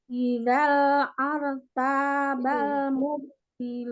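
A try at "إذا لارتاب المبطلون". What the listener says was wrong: Idzallar, bukan ar. Idzallar, tasdid lam. Idzallar tabal mubtilun. Lar, idzallar. Tasdid lam. Idzallar. Mubtilun.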